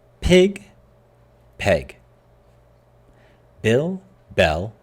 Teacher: a lot of native speakers pronounce these two vowel sounds as the same in certain situations